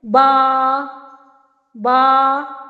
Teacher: دونوں ہونٹوں کی تری سے با ادا ہو رہا ہے